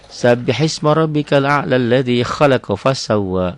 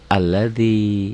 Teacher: kalau disambung hamzah ini enggak berbunyi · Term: hamzah wasol